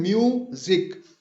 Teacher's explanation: म्यू पहला syllable है जिसको हम स्ट्रेस्ड सिलेबल बोलते हैं, खींच के हम अदा करते हैं, और जिक जो कि अनस्ट्रेस्ड है, इसको हम जल्दी से अदा करते हैं।